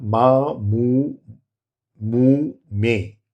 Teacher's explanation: Same onset, ma, vowel moves through front, back, and height.